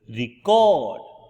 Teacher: the act of recording sound when the stress is on the second syllable